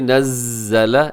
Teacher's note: زا جو ہے اس کے اندر سیٹی ہوتی ہے، تو سیٹی بھی آنی چاہیے یہاں پہ۔